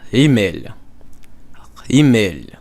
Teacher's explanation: you pronounce it not at the back of the throat, but where the back of the palate is